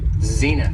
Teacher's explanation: has two syllables and the stress is on the first syllable